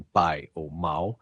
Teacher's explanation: os sons representados por i e u em determinadas posições, como em pai ou mal, funcionam como semivogais